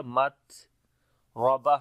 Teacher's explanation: آواز بند ہو جائے گی، پھر سانس جاری ہوگا مت ربہ، را کو موٹا پڑھیں گے اور تا کے اوپر جب رکیں گے تا ہا بن جائے گی ، اور پھر ہمس یہاں پر ہا کے اوپر کریں گے · کو لمبا کریں گے، الف مدہ ہے او مسکینا ذا متربہ، تا کے اوپر شدت اور ہمس دونوں آئے گی، پہلے شدت ہوگی مت آواز بند ہو جائے گی، پھر سانس جاری ہوگا مت ربہ، را کو موٹا پڑھیں گے اور تا کے اوپر